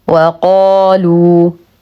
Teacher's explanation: نفخم القاف بأعلى درجات التفخيم لأنها مفتوحة وبعدها ألف مد طبيعي حركتين